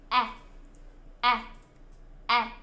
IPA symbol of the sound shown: æ